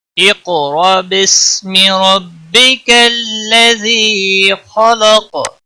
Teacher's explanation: قاف پر قلقلہ ہوگا، قاف حروف مستعلیہ میں سے بھی ہے، موٹا پڑھیں گے۔ را کے اوپر زبر ہے اس لیے موٹا ادا کریں گے۔ · حمزہ ساکن ہے اس لیے تھوڑا جھٹکے کے ساتھ ادا کریں گے۔